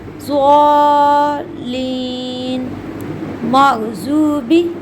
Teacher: ساتواں مخرج حروف ضاد کا ہے۔ اس کی ادائیگی میں زبان کا بغلی کنارہ اوپر بائیں یا دائیں طرف کی داڑھوں کی جڑ سے لگتا ہے